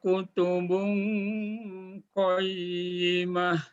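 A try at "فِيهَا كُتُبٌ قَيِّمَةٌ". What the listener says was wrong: Oke, untuk pengucapan huruf fa, ya. Ingat, fa itu huruf asyafatan. Huruf yang keluar dari dua bibir, ya. Jadi kalau dilatih pengucapannya menjadi pakai huruf F, ya, F. Bukan pakai P, tapi F. Fa, fi, fu, baf. Fi. Jadi fi. Jadi, kalau diucapkan fa itu gigi kita sedikit kelihatan. Af. Bukannya up. P bukan.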